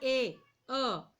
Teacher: it is a neutral for A means not rounded and not spread, that is a neutral.